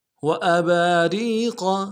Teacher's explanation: را کو یا کے ساتھ ملانا ہے، را کو باریک کریں گے ، یا مدہ ایک الف درمی کھینچیں گے، ری قاف کو